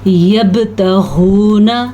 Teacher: با پہ ساکن آنے کی وجہ سے قلقلہ ہوگا کیونکہ با حروف قلقلہ میں سے موجود ہے۔